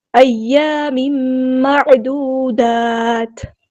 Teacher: ایام معدودات، عین کو مستحل کے مڈل تھروٹ ادا کرنا ہے، واو مد آیا 2 کاؤنٹ لمبا کرنا ہے، اور تا کو ہم ساکن کر دیں گے وقف کرتے ہوئے۔